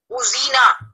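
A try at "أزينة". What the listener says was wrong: Uzina, bravo.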